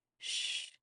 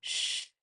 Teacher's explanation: when we have a short sh it's a gentle reminder and when it's longer sh it indicates more urgency